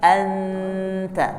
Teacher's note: ada dengung di hidung, ada juga dia dengung di ujung lidah · Anta ada dengung di hidung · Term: ikhfa